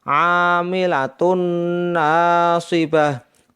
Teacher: dibaca dengung karena tanwun atau domatain bertemu dengan huruf nun sehingga Nun nya seperti ada tasdid dibaca dengung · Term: Idgham bighhunah